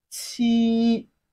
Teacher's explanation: it has a flat tone which is the first one of Chinese language